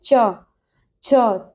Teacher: जब हम चा बोलते हैं तो हमारी जो जीवा है वो हमारे दांतों को स्पर्श करती है